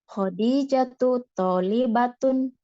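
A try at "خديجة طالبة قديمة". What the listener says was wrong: Toknya yang panjang apa li-nya yang panjang? Cara bacanya jangan mentang-mentang Khadijah tuh ada ya-nya ya. Ingat toknya dia panjang.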